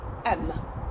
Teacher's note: teach a child the letter m people will say m so you're adding a vowel towards the end of the letter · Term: add a vowel